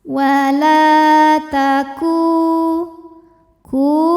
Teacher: harakat saja wala taku ku hukum tajwidnya adalah Mad Thobi'i dahohiri sebab ada wau sukun didahului harakat dhamah cara membaca huruf kafnya ini adalah dipanjangkan dua harakat